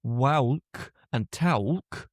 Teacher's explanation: something like /wæʊlk/ and /tæʊlk/ with an added /ʊ/ sound